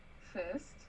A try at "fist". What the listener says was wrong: It sounded like you just said first with a New Zealand accent. You would be if that was what you were intending to say.